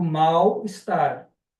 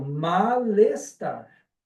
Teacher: na verdade eu pronuncio como u eu não pronuncio como L